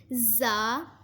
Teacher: زا زبان کی نوک اور دونوں دانتوں کے اندرونی کنارے سے ادا ہوتا ہے۔